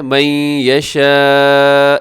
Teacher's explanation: یہ مد متصل ہے، 4 سیکنڈ تک لمبا کیجیے گا